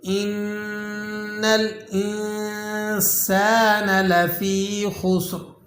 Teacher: خا کو آپ نے موٹا ادا کرنا ہے، یاد رکھیں خا موٹے حروفوں میں سے اور سین ہمیشہ باریک پڑھے جانے والے حروفوں میں ہے، اور اس کے اندر یہاں پر آپ نے سیٹی بھی ادا کرنی ہے۔